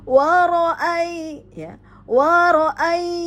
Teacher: ya sukun huruf sebelumnya berharokat fathah, maka terjadi lin